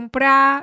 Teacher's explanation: if you speak the central variety, you can say verbs without pronouncing the final r.